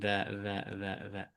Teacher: Jadi ujung lidah ke ujung gigi atas. Dza ini keluarnya dari ujung lidah dengan ujung gigi seri atas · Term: huruf dza